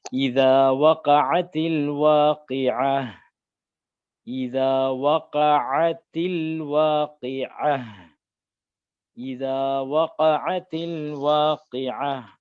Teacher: இதா அப்படின்னு சொல்லும்போது நாவு வந்து என்ன செய்யணும்னா அந்த பல்லு ரெண்டு பல்லையும் கடிச்ச மாதிரி சொல்லணும். இதா அழுத்தி சொல்லக்கூடாது.